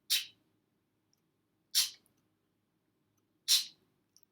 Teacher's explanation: Ch is made by placing your tongue against your palate, stopping the air, and then releasing it abruptly. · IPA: tʃ